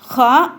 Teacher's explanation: ஹா அப்படின்னு சொல்லும் பொழுது அந்த உள்நாக்குல என்ன ஆகும்னா ஒரு அதிர்வு ஏற்படும்